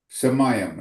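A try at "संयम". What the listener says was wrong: The M sound is silent. It should have a dot on the top, I think.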